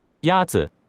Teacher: The first tone is a high, level tone.